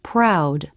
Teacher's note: when r is in a beginning consonant cluster the lips may not be as tight as in a beginning r